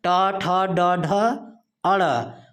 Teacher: ड और ढ आपके मूर्धन्य वर्ण हैं, इनका उच्चारण मूर्धा से होता है